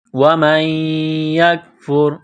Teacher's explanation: نون ساکن کے بعد یا مشدد ہے تو نون ساکن پر غنہ کریں گے. وَمَن یکفر کاف کو باریک کرنا ہے.